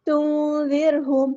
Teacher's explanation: انذرتہم لم تنذرہم، یہاں پر نون ساکن کی آواز کو چھپا دینا ہے کیونکہ نون ساکن کے بعد ذال ہے، ذال کو ہم نے سختی کے ساتھ نہیں پڑھنا، زر نہیں کرنا، زر نرمی سے ادا کرنا ہے، باریک ادا کرنا ہے